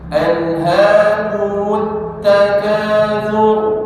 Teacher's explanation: Alhaakumut takatsur ra tebal thur bukan sur tapi thur